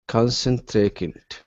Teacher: concentrating stress at the beginning